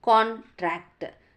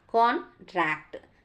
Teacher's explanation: word contract is stressed differently depending on its part of speech as a noun contract that means stress on the first syllable